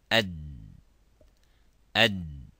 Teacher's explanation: if we pronounce the d it stops completely